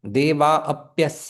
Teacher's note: विसर्ग लोप हो जाता है और यण संधि होती है